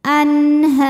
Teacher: Sebab nun sukun menghadapi huruf halqi yaitu ha, maka nun dibaca jelas. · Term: zhar halqi, idhar halqi